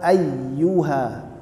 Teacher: A dan Alif di sini adalah huruf tipis jangan seperti pengucapan au